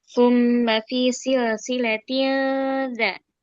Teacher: tahan dengungnya 3 harokat di rongga hidung merupakan tingkat gunah kedua, gunah kamilah. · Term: ikhfa hakiki akrob